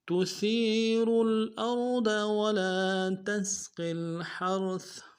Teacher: را کو لام کے ساتھ ملائیں گے، را کو موٹا کریں گے